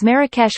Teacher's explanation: A typical pronunciation in Moroccan Arabic is Marrakesh with stress on the second syllable, while vowels in the other syllables may be barely pronounced.